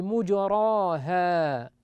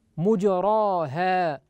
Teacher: إذن هذه الكلمة التي انفرد بإمالتها حفص عن عاصم، ولم يملها شعبة بن عياش، وقرأها شعبة بضم الميم وفتح الراء، فيكون قراءة شعبة بدون إمالة، فيضم هذه الميم بعد أن كانت مفتوحة، ويقلقل الجيم على أصلها، ويفتح الراء ولا يميلها ولا يميل الألف بعدها